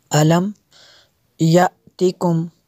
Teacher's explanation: حمزہ ساکنہ کو جھٹکا دیں گے